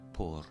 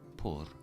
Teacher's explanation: Notice again, I'm trilling that R.